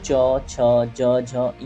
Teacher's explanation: तो तालव्य व्यंजन की पहचान हमने आपको बता दी है। तो जब आप च छ ज झ य बोलते हैं तो आपकी जीभ जाके आपके तलवे को टच होती है